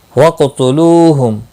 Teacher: قاف مستعلیہ ہے، پر پڑھا جائے گا، ساکن بھی ہے، اس پر قلقلہ بھی ہوگا کیونکہ حروف قلقلہ میں سے بھی ہے۔